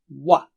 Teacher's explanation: و ہونٹ گول کر کے کھولیے تو اچھا واضح وا آئے گا